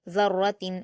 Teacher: آگے دیکھیے گول تا پر تنوین ہے اور تنوین کے بعد خا آیا ہے جو کہ حروف اظہار میں سے ہے، اس لیے یہاں تنوین کو ظاہر کر کے جلد پڑھا جائے گا